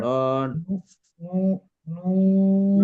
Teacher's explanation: আর পেশটা নন উচ্চারণ করতে হবে মূলত গোল করে